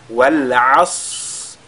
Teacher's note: le Sad il a la caractéristique de Al-Hams, c'est-à-dire il y a l'écoulement de l'air qui se produit au moment de sa prononciation, ce qui nous permettra d'allonger, n'est-ce pas, sa prononciation avant de lire la lettre Ra.